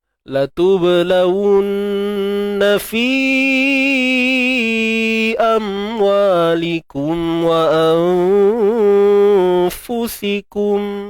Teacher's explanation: Fi panjang 4 atau 5 harakat. Amwalikum wa mad asli. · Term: Mad jaiz munfasil